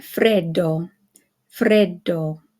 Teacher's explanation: you hold it just a little bit longer than if it were just one D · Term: Double D